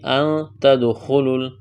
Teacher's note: نون ساکن کے بعد تا ہے، اخفا کریں گے۔ ان تدخلوا دال پر قلقلہ کریں گے، خوا کو موٹا کرنا ہے، اس واو اور الف کو نہیں پڑھیں گے۔